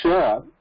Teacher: there is no complete contact as in church but there is no complete gap also